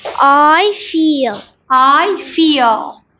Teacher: dark L at the end of that feel